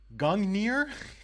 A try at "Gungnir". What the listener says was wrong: well, I don't think you pronounce the second N. I mean, my Old Norse isn't very good, but it's It's Gungnir. Gungnir. I mean, I can send you the IPA, but I don't know if you can read IPA.